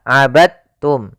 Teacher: Ya, meskipun dal termasuk huruf qalqalah karena dia memiliki makhraj yang sama dengan ta, maka diidghamkan dalnya kepada huruf ta sehingga dibaca dengan huruf ta-nya langsung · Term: idgham mutajanisain